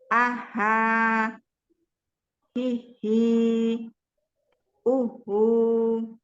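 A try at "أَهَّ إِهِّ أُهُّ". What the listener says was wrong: Dialirkan. Ketika ditasydid ya, afwan. ketika ditasydid huruf H ini tadi dialirkan ya. Apa tidak terputus ya. Ihi, uhu. Dialirkan lagi ukti.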